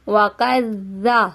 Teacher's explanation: یہاں پہ زال میں سٹی کی آواز نہیں آنی چاہیے